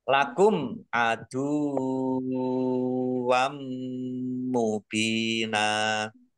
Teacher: fathah tanwin bertemu dengan huruf mim, bacaan idgham bi gunnah, masuk dengan mendengung. Masuk. Langsung masuk ke huruf mim dan mendengung ditandai mimnya ada tasdidnya. · Langsung masuk ke huruf mim dan mendengung ditandai mimnya ada tasdidnya. Mim tasdid dibaca gunnah atau mendengung ditahan 2 harokat biar tampak dengungannya.